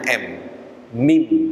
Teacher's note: huruf mim itu dua makhrajul hurufnya yaitu yang pertama kedua bibir yang kedua hidung